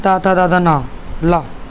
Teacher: जिनका उच्चारण ऊपर के दांतों पर जीभ लगाने से होता है